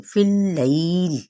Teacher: فا کی زیر کو لام کے ساتھ ملائیں گے